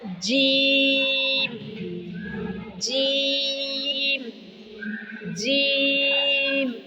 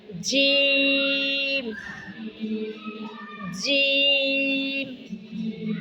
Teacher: زبان کا درمیان، یعنی درمیانی حصہ تالو کی طرف جب اٹھے، تالو کے ساتھ لگے، جیم، جیم، جیم۔ آپ کی زبان کا سینٹر اوپر کی طرف اٹھ رہا ہے، تالو کی طرف لگ رہا ہے، جیم، جیم۔ اور اسی طرح سے آئے گا شین، شین، شین، شین، شین۔